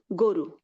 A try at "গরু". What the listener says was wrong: না, এটা দুটা, একটা আপনি ওকার করে ফেলতেছেন, আরেকটা বলে শুধু গরু বলতেছেন, এই জন্য আপনি দুটাই গরু বলেন। গরু টান দিচ্ছেন।